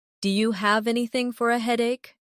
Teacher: Do you sounds like dia.